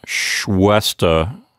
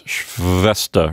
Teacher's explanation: you don't want to use both of your lips like the W sound, but you want to use your upper teeth against the lower lip, V. So it's not Schwester. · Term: V sound